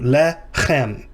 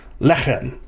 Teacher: But unlike most Hebrew words, the initial vowel, or the initial syllable is accented rather than the last syllable.